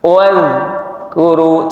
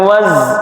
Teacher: Sering za itu keluarnya seperti za, ya, karena tidak tepat. Maka biar tidak seperti ada ts-nya atau hamesnya, ujung lidah tempelkan gigi, pucuk gigi. Wadhkuru, jangan ditarik.